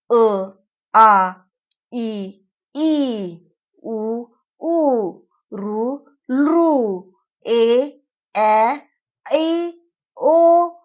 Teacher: उच्चार करताना ओठांचा किंवा जिभेचा मुखातील कोणत्याही अवयवाशी स्पर्श होत नाही आणि स्पर्श न होता जे ध्वनी बाहेर पडतात त्यांना स्वर असे म्हणतात.